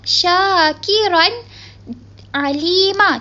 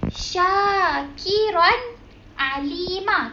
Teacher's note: Sebab tanwin bertemu dengan huruf izahar halqi, iaitu salah satunya huruf ain. Kita tak boleh baca dengun. So, bacaan yang betul ialah syakiran alima.